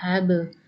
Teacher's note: قلقلہ کریں گے، با کے اوپر جزم ہے، حروف قلقلہ میں سے حب۔